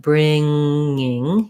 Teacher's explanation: You're lifting in the back for the NG and you're sliding right into that I sound. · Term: the ng sound